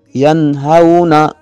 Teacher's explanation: ینہون نون ساکن ہے اور اس کے بعد ان 6 حروف اظہار میں سے ہا آ رہا ہے، لہٰذا یہاں غنہ نہیں ہوگا۔ اس کو اظہار کہتے ہیں کہ نون کو ظاہر کر پڑھنا بغیر غننے کے